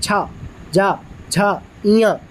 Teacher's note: तालव्य में तालु, मुंह के भीतर की छत का पिछला भाग से आता है